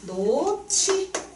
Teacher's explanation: 역시 히웃이 앞에 있었네. 그래서 거센소리 치으로 축약됐다. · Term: 자음 축약